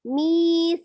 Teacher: mi-nya panjang, sa-nya juga panjang, qi-nya pendek, hi-nya juga panjang